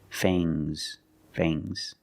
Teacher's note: the S is making a zebra sound, Z, but it's soft.